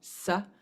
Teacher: just the S without a sha sound to it is a dental